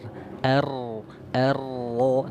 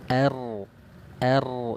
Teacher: Apa artinya dia huruf-hurufnya itu mudah diucapkan bagi vokal-vokal orang Arab takrir artinya apa ujung lidah bergetar er coba nih Nah er er Jangan sampai kita membacanya itu